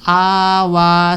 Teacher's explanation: dalawang pong stress dyan. Yung a, doon sa a at saka sa wa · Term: stress o pagpapahaba